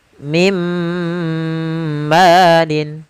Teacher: Nah, kemudian Contoh yang kedua, apabila ada nun sukun atau tanwin bertemu dengan huruf mim, yaitu masukkanlah suara nunnya kepada suara mimnya. Maka bukan lagi min malin, akan tetapi menjadi mim malin. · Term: idgham bi gunnah